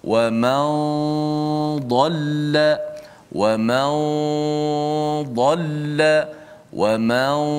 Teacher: Jadi daripada min pindah kepada huruf dad. Nun hanya dikekalkan bunyinya pada gunnah di khayshum ataupun di hidung.